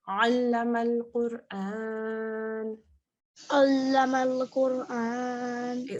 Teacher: Okay, so ayn is a letter of the throat. And when we say ayn, what we do is we open our mouths and you tighten your throat slightly.